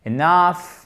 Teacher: Enough, accent tonique sur la seconde syllabe.